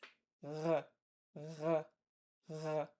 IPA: ʁ